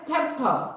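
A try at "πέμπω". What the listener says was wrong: There's two P's in there.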